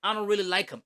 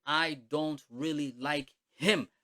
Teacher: iyo weak h na waa h daciifa kaana badanna waa laga tagaa